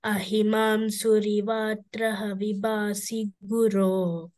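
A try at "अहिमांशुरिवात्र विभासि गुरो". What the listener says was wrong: You keep saying Vatraha, just cut that aha. Ahimam Shurivatra Vibhasi Guru Bhavashankara Deshikame Sharanam.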